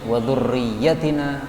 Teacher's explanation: ya-nya pendek aja karena sebagai mufrad. Kalau panjang itu jamak.